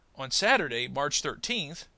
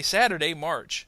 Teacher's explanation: I kind of jump into March to kind of show that even though there's a comma there, they still somehow belong together